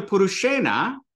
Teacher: So when I get down to Purushena, first thing we notice is that would be just a na, but it becomes retroflex because of the ru and the sha that comes before it